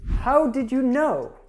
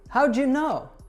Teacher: When we have a D plus a Y, it becomes j.